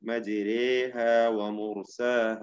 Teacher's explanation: അവിടെ മജരേഹ എന്ന് ഇമാലത്തോടുകൂടി അലിഫും യാവും അല്ലാത്ത ഫത്ഹയും കസ്റയും അല്ലാത്ത ഒരു ശബ്ദത്തോടുകൂടി ഉച്ചരിക്കേണ്ടതാണ് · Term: ഇമാല കുബ്ര